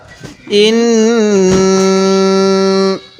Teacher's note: এখানে যেহেতু নুনের উপর তাজদিদ আছে এজন্য আমরা এখানে গুন্না করবো নাকের বাঁশি দ্বারা